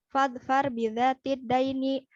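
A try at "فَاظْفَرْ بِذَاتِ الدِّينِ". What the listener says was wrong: Din, bukan dain. Din.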